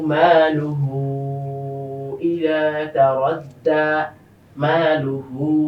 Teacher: মাদের হরকতের পাশে আলিফ এসেছে, যেটা তিন আলিফ টান আমরা দিচ্ছি।